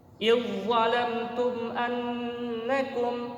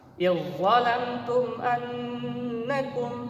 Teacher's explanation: huruf dal sukun bertemu dengan huruf za. Jadi huruf dal sukun dimasukkan ke huruf za sehingga tidak terdengar lagi huruf yang pertama. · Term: idgham mutajanisain